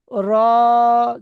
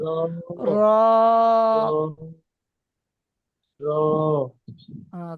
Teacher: জীবের আগার উল্টো পিঠ উপরের পর তালুর সাথে লাগান